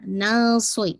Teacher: صاد کی کسرہ ہے تو جسے کہا جائے کسرہ لیکن پھر بھی آپ اس کو ہیوی کریں گے